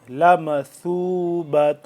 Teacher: زبان کی نوک کو دونوں دانتوں کے درمیان باہر کی جانب تھوڑا سا نکال کر اور نرمی سے ثا پیش ثو